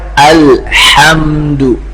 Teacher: ha yang dimaksud yaitu dari wastul halaq, tengah tenggorokan. Sehingga baca alhamdu dari tengah.